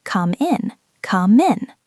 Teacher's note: And they hear the word min, M-I-N, and they think, what is a min? But what they are actually hearing is the M from come connecting to the I in